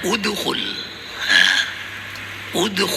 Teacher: Nah, ketika ada goncangan itulah lalu muncul ada satu suara suara tambahan lah suaranya bukan fathah, bukan kasrah tapi tengah-tengah antara fathah dengan kasrah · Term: qalqalah